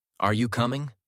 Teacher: Intonation is the rise and fall of your voice. Rising intonation, usually for questions. · Voice goes up at the end.